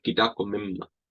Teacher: if it comes after a consonant, like an M, we cut out the W.